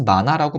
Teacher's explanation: 히읗 소리 연음시키지 않고 우리가 탈락시켜버리죠. 자리가 있음에도 불구하고 탈락시켜버립니다. · 니은 받침을 연음시켜서 올려버립니다. 그래서 만화라고 발음을 하잖아요.